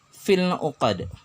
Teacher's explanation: Alif lam bertemu dengan ain, alif lamnya dibaca al, jelas. Ainnya juga dibaca jelas. Berarti izhar qamariyah.